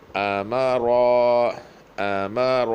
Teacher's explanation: حمزہ پتلا ہے، سخت اور پتلا. میم پتلا ہے